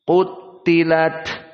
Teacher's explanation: Qutilat, namun taknya tasdid. Qutilat, dan ta tetap dalam keadaan al-hams.